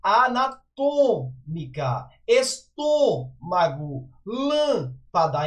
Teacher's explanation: Traz uma sílaba tônica, uma vogal, né? Sílaba tônica, porém a pronúncia é fechada.